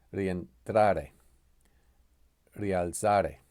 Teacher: Or we have the hiatus, where 2 vowels together, when we have 2 vowels together, each of the vowels are pronounced as a part of a distinct syllable. 3 occasions in which this happens is when U or I is not present, or when U or I is emphasized, or in a compound verb beginning with ri.